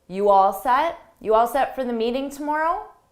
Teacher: to show it's a question we can use a rising intonation at the end